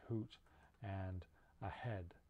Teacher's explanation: it's voiceless it's a fricative and this is a sound made at the voice box so fricatives are made by narrowing something in the voice box · so fricatives are made by narrowing something in the voice box you bring the vocal folds close together so that when air goes through you get that that hissing quality to the sound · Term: h sound, the h sound, H sound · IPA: /h/